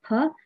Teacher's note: The next we have the aspirated plosive, the bilabial aspirated plosive